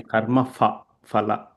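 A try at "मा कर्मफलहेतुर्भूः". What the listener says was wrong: No. Fa sound is not there in Sanskritam. Okay. It is karma phala hetur bhuhu.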